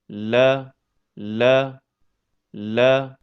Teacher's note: Huruf lam keluar dari ujung tepi lidah yang bertemu dengan gusi bagian atas, dekat makhraj huruf ra.